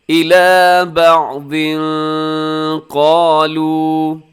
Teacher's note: بعضن کے نیچے تنوین ہے، 2 زیر کی تنوین ہے اور تنوین کے بعد قاف حروف اخفا میں ہے۔ آپ یہاں پر آواز کو ناک میں چھپائیے گا